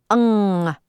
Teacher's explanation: To pronounce NG, pull your tongue all the way back and into your throat.